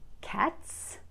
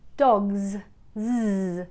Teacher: the letter S is unvoiced in cats, but voiced in dogs. Z. That's where the S makes a Z sound.